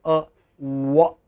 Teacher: lips are completely rounded, like you are going to say, ooh, you know, round, just round, and then say, wah.